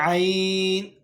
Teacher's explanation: وسط حلق یعنی حلق کا درمیانی حصہ یہاں سے عین ادا ہوگا